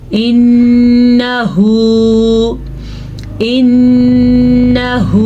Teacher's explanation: नून पे गुन्ना तो करना है लेकिन नून को लंबा नहीं करना, क्योंकि नून के ऊपर सिर्फ और सिर्फ ज़बर है।